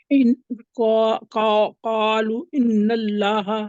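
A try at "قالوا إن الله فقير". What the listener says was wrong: قالو کہتے ہیں، قالو لمبا کریں، اس کے اوپر تو مد بھی آ گئی.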